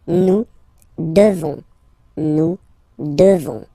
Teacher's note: You just pronounce this on, O-N, this nasal. Okay? And then the S, final S is not pronounced.